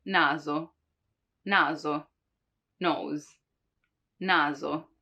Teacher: While there's also an hard one, which is actually more close to a Z sound, a Z, which is when the letter is in between two vowels, when the S is in between two vowels. Like in naso, nose, naso. You see, it's not naso, which would be the S from sorella, sister, but naso, more like a Z, right? Naso.